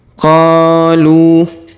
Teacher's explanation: Huruf Qa kita panjangkan 2 harokat karena terdapat alif di depannya.